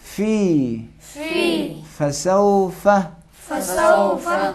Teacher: اوپر والے دانتوں کے نوک نیچے والے ہونٹوں کے نرم حصے سے لگائیں گے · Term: حرف فا